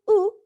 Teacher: it is produced with rounded lips and the tongue in the highest and farthest back position possible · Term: high back and rounded